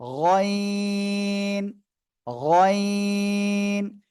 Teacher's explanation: তিন আলিফ টেনে পড়তে হবে গয়েন অক্ষরে